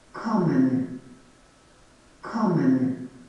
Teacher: Kommen, né? Então, o ko é a sílaba tônica, a primeira.